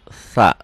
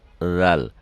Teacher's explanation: Lidah ke depan, sa. Tarik lidahnya ke dalam lagi, zal.